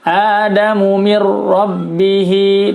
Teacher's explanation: Adamu mir rabbihi, nun sukun bertemu ra, hukumnya adalah idgham bila gunnah. Bacanya dimasukkan suara nun sukunnya ke dalam suara huruf ra, tapi tidak didengung.